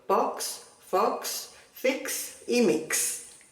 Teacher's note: la X que se pronuncia como una KS